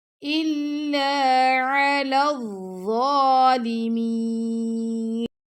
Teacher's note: ضا پر کھڑا زبر ہے، ضا کو ہم 2 سیکنڈ تک لمبا کریں گے